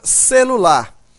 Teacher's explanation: observa que a sílaba mais forte desta palavra é a sílaba lar